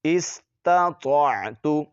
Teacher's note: تو، استطاعت، یہاں پر تا اور طا میں فرق کریں گے، تا بریک پڑھی جاتی ہے اور طا کو موٹا پڑھا جاتا ہے